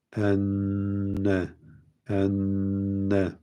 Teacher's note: Burada olduğu gibi iki tane aynı harf böyle peş peşe gelirse evvelki cezimli sonraki böyle harekeli olunca bunlar birbirine idgam edilir ve nun harfi olduğu için nun gunneli okunur. Dolayısıyla burada meal gunne diyoruz. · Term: idgam mislein